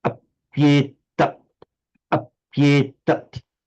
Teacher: With sandhi, the e has become a y. It now counts as a consonant. So this is now what was without sandhi 2 light syllables has now with sandhi become 1 heavy syllable.